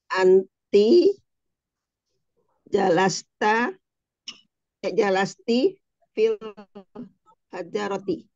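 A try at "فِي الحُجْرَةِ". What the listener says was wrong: Ya, kok jadi hajar lagi, bukan, ini bukan hajar nih.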